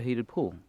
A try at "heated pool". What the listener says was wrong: You said hated pool. Hated, not heated. No, that's a slip. You made a slip, but you said hated because we were talking about Mom.